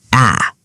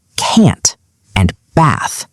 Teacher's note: opens his mouth wide and flat, like the A in cat. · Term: flat A